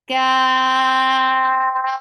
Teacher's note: Kaf will be six counts long.